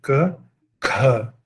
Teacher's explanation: o schwa começa, mas as pregas vocais ainda não estão vibrando normalmente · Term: surdas aspiradas